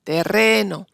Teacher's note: Ahora si recordamos los casos anteriores, el que hemos visto antes, en tierra, la IE es tónica, por eso si tenemos el diptongo en terreno, el acento está sobre la segunda E, terreno, por lo tanto ahí tenemos una E y no IE.